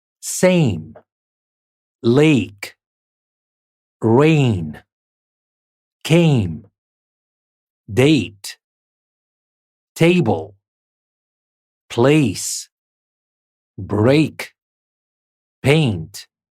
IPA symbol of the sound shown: ei